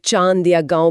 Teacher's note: अनुनासिक मतलब इसका उच्चारण मुंह और नाक दोनों से मिलकर होता है। ओ जैसे चांद या गांव बोलते वक्त नाक में वाइब्रेशन फील होती है